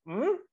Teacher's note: It's a long bilabial nasal with an extra high tone